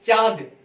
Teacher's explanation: अगर आप चांद बोलेंगे इसमें वायु मुख और नाक दोनों से निकलती है, चांद बोलकर आप देख सकते हैं। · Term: अनुनासिक